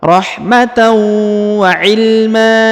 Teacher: an dan berada di ujung maka dia berubah menjadi ma ya bukan lagi man tapi Ma dan dipanjangkan dua harakat